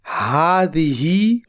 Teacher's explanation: ہا کی آواز کو ایک الف کے برابر لمبی کر کے ہذہ پڑھیں گے